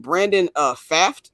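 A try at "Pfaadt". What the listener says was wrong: Fott. Fought. the P is silent. The P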